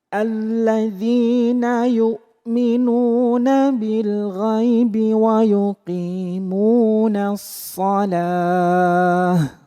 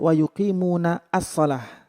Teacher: Ya, wa yuqimunas shalah membacanya bukan wa yuqimuna as-shalah karena di situ ada hamzah wasal. Hamzah wasal itu tidak terbaca, jadi masuk langsung ke shad namanya asyamsiyah.